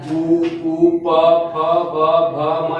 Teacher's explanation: उ प फ ब भ म, ये सब कहाँ से बोले जाते हैं, ओष्ठ से। बोले तो जाते हैं मुंह से ही सारी चीज, लेकिन मुंह के जो भी पार्ट अगर टच करता हो वही बोलते हैं कि उच्चारण वहीं से आता है।